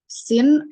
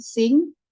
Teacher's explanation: A classic example of a minimal pair highlighting the difference between nasal and oral vowels is the pair sin and sing. In sin, the vowel is oral, while in sing, the vowel is nasalized due to the presence of the nasal consonant